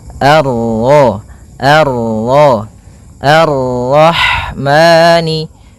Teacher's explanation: baca dengan bacaan Al sebagaimana yang di atas Al kemudian ini bertemu dengan huruf ro yang berharakat tasydid maka rnya kita baca dengan tafkhim